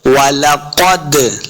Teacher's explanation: दाल साकिन है, दाल हुरूफ क़लक़ला से है, इसको खूब वाज़े करेंगे।